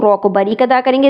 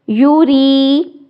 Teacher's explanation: رو کو باریک ادا کریں گے زیر کی وجہ سے